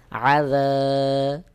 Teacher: আইন হলকের মধ্যখান থেকে উচ্চারণ হবে হলক অর্থাৎ গলার মধ্যখান থেকে একটু চাপ দিয়ে উচ্চারণ করতে হবে